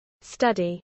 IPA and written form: ˈstʌdi (study)